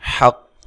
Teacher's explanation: قاف کو موٹا ادا کرنا ہے، حا کو واضح ادا کرنا ہے اس کے مخرج سے